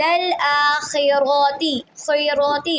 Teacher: خا اور را دونوں کو پر پڑھیں گے۔